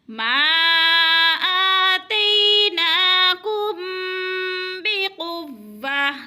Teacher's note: ما پہ مد متصل ہے کیونکہ حروف مدہ کے بعد حمزہ اسی کلمے میں ہے تو مد متصل کو 4 حرکات کے برابر کھینچ کر پڑھنا ہے